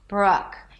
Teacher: It's somewhere between oo and o and ah, bruk. Imagine like you have a hot potato in the back of your mouth, bruk, bruk.